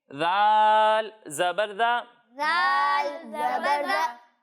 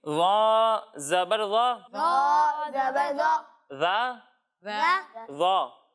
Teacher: ज़ाल को हम बारीक पढ़ेंगे और ज़ा को हम मोटा पढ़ेंगे · जब हम ज़ा की अदायगी करेंगे तो इसमें सीटी की आवाज़ आएगी